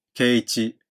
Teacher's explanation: 低い高いは長母音が2番目の拍にある場合、高い高いと発音されます。 ですので、圭一というよりは圭一。ただ平らに発音されることも多いです。第1部、平和の橋、首都ハルホルト。第1